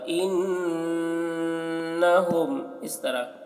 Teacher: کلا انہم، نون مشدد غنہ ہوگا